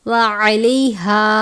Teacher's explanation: आइन को हमेशा बारीक पढ़ते हैं, यानी हलक से अदा करते हैं